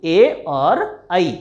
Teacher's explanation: ए दे तो कंठ तालु, यानी ए और ऐ ये दो वर्ण कहाँ से उत्पन्न होते हैं? कंठ और तालु के मिलने से। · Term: कंठ तालव्य